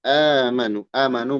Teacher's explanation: Amanu mad badal. Hamzah menghadapi mad. Dua harokat ya.